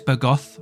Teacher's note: like the S is almost like a th sound